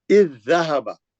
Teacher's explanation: یہ زال پورا چھوڑ دیں گے آپ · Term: ادغام